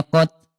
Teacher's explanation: huruf ta kalau sukun dia syiddah, dia kuat, dan hams ada udara